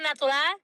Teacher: the most prominent feature of the Puerto Rican Spanish is replacing the R sound with L